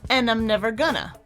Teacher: He drops that D, and gonna ends with a vowel sound.